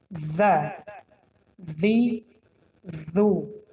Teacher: سری زبان را در بین دندان ها گذاشته میخونیم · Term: حرف ذال